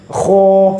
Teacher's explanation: Karena sifatnya isti'la, tekanan suaranya ke langit-langit. Kho, seperti itu ya.